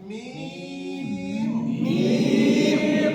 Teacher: দুই ঠোঁট থেকে হবে, আবার লম্বা হবে